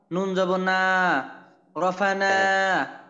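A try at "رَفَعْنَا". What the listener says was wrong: আচ্ছা, বানানের ভিতরে কিন্তু আপনার ওই নুনের আলিফটাকে উল্লেখ করতে হবে। নুন আলিফ জবর না, রফা'না।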